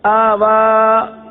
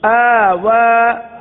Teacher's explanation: آوا یعنی پہلے حمزہ کو نہیں کھینچا, پہلا حمزہ وہ نہیں کھینچا گیا اور واو کو کھینچ دیا, حالانکہ دونوں کھڑا زبر ہے, دونوں کو ایک الف تک کھینچ کر پڑھیں گے